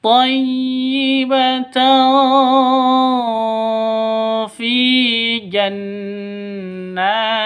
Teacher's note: Fi panjang dua ketukan karena ada ya mati diawali dengan kasroh. Ya mati sebelumnya berharokat kasroh. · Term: mad asli